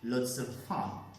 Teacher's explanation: the S is linked to of, weak form of